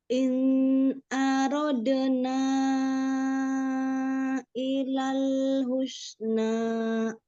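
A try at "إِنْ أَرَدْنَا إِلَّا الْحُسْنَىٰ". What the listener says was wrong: Hanya jangan arad, jangan panjang, langsung arad. In aradna illal husna. Illal tasdid lam. Illal husna.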